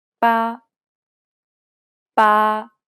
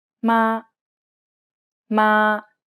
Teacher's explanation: It's pronounced high and steady, and the pitch should be kept to the highest range that's comfortable for you. Ma, ma. The key point here is to keep it even across the whole syllable. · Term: first tone